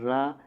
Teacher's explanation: थोड़ा सा उसमें गुर्राहट सी आवाज़ आती है, तो प्रकंपित रा हो जाता है।